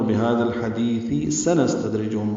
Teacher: سنستدرجہم، سین نون کو سین سے ملانا ہے، دوسری سین پہ ہمس ہے. تد میں دال ساکن پہ قلقلہ ہے، را باریک ہے · ہا کی وجہ سے لام ساکن بھی ہوا ہے. ہا کو وسط حلق سے جلدی سے ادا کریں گے اور دیس میں دال کو لمبا کریں گے.